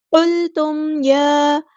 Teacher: میم ساکن پہ اظہار شفوی ہو رہا ہے، ٹائم نہیں دینا